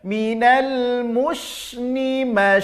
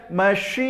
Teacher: gak ada pergerakan bibir karena dia bukan huruf syafatain bukan huruf bibir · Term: huruf lisan